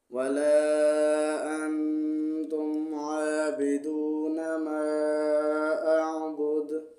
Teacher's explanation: وقف میں یہاں پہ دال کو ساکن پڑھیں گے تو دال پہ قلقلہ کریں گے.